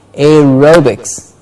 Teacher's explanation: Aerobics, ro gets a stress.